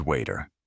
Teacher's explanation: The T sound is very soft, almost like a D